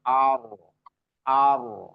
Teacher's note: Ada yang bilang cukup dua kali getaran aja. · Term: takrir